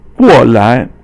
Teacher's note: So 过 is fourth tone, and 来 is 轻 声. So you don't really pronounce it as second tone. Normally 来 is second tone, but here 过 来 is the 来 is 轻 声, no sound, so no tone, and it means to come over.